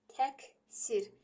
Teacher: Burada q çevrildi k-ya. Nəyə görə? Q-dan sonra kar samit gəldiyinə görə. Ancaq cinciltili gəlsə olduğu kimi qalır.